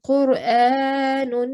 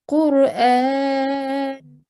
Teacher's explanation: And the same thing happens with the tanween of dhamma as well, with dhammatain. So rather than saying Qur'anun, you change that tanween into a sukoon and you say Qur'an.